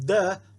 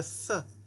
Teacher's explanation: So instead of duh, it's th. Just move your tongue down about a quarter of an inch from duh to th